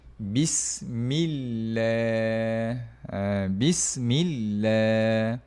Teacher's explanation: Sebelumnya ada huruf mim baris bawah. Jadi kita baca dengan nipis.